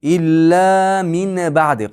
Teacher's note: shukunlik nun yoki tanwinlar mana bu ba yo'l qilib kelsa mimga almashib ketadi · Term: iqlab